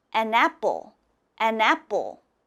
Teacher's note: when you have an in front it has to sound almost like one word